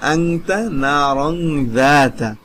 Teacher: এই যে তানবিনের বামে বা তানবিনের পরে। অতএব তানবিনকে নাকের বাসিতে গোপন করিয়া গুন্না সহিত পড়া। নাকের বাসি কোনটা সেটা আপনি ভালো করে জানেন, নাকের বাসির ভিতর লুকাইয়া পড়বেন।